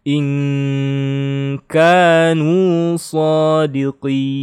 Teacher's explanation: nun sukun ketemu ka, ikhfa, harus dengung ya